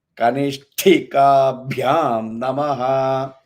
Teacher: it is not a soft ba, it is the Mahaprana ba.